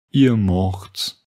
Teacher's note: Pour tous les verbes, la deuxième personne du pluriel ne se termine pas par te, mais par tse.